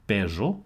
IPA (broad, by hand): pero